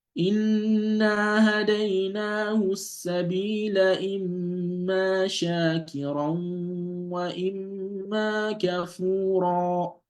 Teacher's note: So ra here is being heavily pronounced